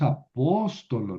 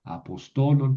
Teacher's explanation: porque añadí una vocal larga y entonces tuve que mover el acento.